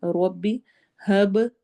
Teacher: ربی، روا کو موٹا پڑھنا ہے، ربی ہب، با پہ قلقلہ ہوگا، ایکو ساؤنڈ ہوگی